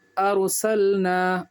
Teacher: راہ ساکن سے پہلے زبر پیش ہوگا تو پر ہوگی